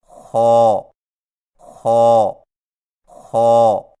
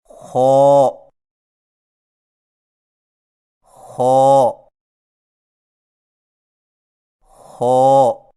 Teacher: خا کی ادائیگی میں زبان کی جڑ کو تالو کی طرف بلند کرتے ہوئے موٹی آواز میں پڑھیں، یعنی خو خو خو، اور یاد رکھیں کہ خا کی ادائیگی میں خرخراہٹ کی آواز پیدا نہ ہو، یعنی خو خو خو، اور یہ صحیح نہیں۔